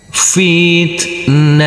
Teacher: Huruf ta yang bersukun ini tidak boleh kita pantulkan karena ini adalah bukan bacaan qalqalah, dan huruf ta marbutoh yang berfathah tanwin ini kita kasih tambahan akhiran huruf n.